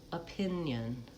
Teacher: there's really almost no vowel, so that's a syllabic N at the end. · Opinion has second syllable stress. So opinion starts with a schwa. Even though it's letter O, it's an unstressed syllable. Pin, vowel I, pin, and then yun, the I-O, makes kind of a y sound, yun. · pin is really where you're going to want to have the length, and the pure vowel, and yun have reduced vowel schwa and syllabic N.